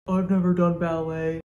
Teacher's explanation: phonetically, of course, she lowers her voice pitch, but she also makes her voice much more breathy